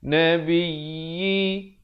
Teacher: tekankan di atas ya bersabdu dua harakat.